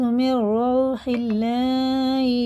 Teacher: یہ اللہ کا لام زیر سے باریک پڑھیں گے